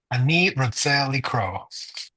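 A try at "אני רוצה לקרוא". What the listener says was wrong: Beautiful.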